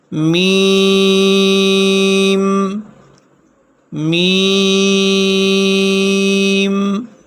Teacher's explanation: میم دونوں ہونٹوں کی خشکی والے حصے سے ادا ہوتا ہے